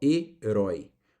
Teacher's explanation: Nós temos aqui um ditongo aberto, herói